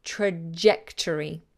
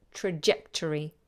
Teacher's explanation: I hear a lot of student saying this soft like in French leisure but in English usually this is a hard sound